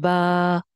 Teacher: ये जो हमजा की वजह से आने वाली मद होती है, इसको दो अलिफ लंबा करके पढ़ते हैं